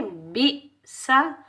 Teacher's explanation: बा के नीचे जेर बा को हम हमज़ा साकिना के साथ मिलाएंगे और हमज़ा साकिना को हम झटके से अदा करेंगे, बगैर खींचे पढ़ेंगे। सीन के ऊपर ज़बर बगैर खींचे पढ़ेंगे